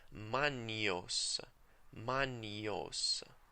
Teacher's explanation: The letters GN, as in magnos, are pronounced as in NY sound in English.